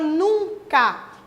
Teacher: Tem a palavra nunca, que esse U, junto com a letra N, produz apenas um som do U nasalizado